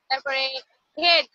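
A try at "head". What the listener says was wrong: তুমি টান দাও কেন? হেড হেড বললে তো লম্বা হয়ে যায়। হেড হ্যাঁ।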